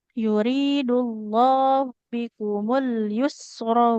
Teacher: Nah, jadi panjang pendeknya juga hati-hati Bu. Alyusro rnya enggak boleh panjang